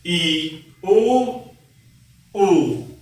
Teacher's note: जिन स्वरों के उच्चारण में जीभ बहुत ऊपर उठ जाती है वे संवृत स्वर कहलाते हैं।